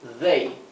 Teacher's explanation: they es aquí lo he escrito con dh para para imitar la th inglesa que sería they parecido una d Pero vibrante